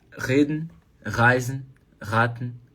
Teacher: em várias outras regiões da Alemanha, já é o R vibrando o sininho